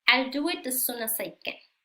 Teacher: no vamos a pronunciar 2 veces el mismo sonido, solamente uno